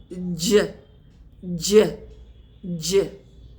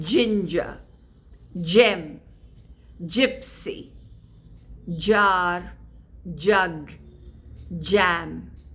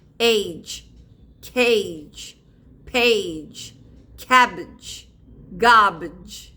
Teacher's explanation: The sound j is produced by bringing the tongue, middle of the tongue, very close to the ridge of the hard palate and release the air.